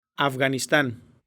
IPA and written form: av.ɣa.nisˈtãn (Afganistán)